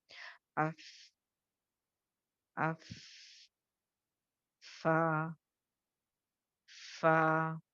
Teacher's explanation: आपको समझ में आएगा कि फा के अंदर एक हल्की सी सांस चल रही है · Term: हम्स